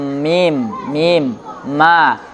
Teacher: kedua bibir juga tapi lebih ringan dari ba. Hurufnya mim